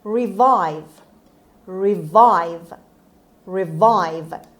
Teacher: the stress is on the second syllable on v sound revive means bring back or come back to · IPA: /rɪˈvaɪv/